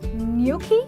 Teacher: And then we have gnocchi, wherein the G is silent and there's an invisible Y in the pronunciation